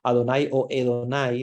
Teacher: acuérdense que es como cuando uno pronuncia también en inglés que no es exactamente la vocal como nosotros pensamos verdad sino que es una a entre a y e · no es exactamente la vocal como nosotros pensamos, ¿verdad? Sino que es una A entre A y E. Entonces, por eso algunos pronuncian Adonai y otros pronuncian Edonai.